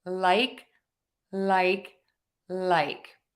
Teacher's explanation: for the L I'm touching the back of my top front teeth that alveolar Ridge where the skin meets the teeth